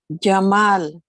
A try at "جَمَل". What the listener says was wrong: لا not جمال. Make it short because if you make it long it will be ألف. It means beauty. Jamal is beauty. Jamal is camel.